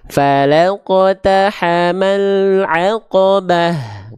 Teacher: Sedangkan lam nggak punya sifat syiddah. Lam itu tawasut, makanya l-nya ini masih jalan sedikit.